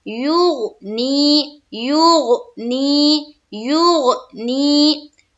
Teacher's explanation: آگے چلیے، یونی، یہاں دیکھیے غین ہے، غین حروف قلقلہ میں سے نہیں ہے، اس کے علاوہ ہے، تو یہاں پر ہم جب یا کو غین سے ملائیں گے تو غین کا جو مخرج ہے اس کے اوپر ہماری آواز رک جانی چاہیے، ٹکراتی ہوئی معلوم نہ ہو۔